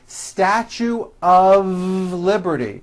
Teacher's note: Even though the word of is spelled with an F, we pronounce the word of with a voiced V.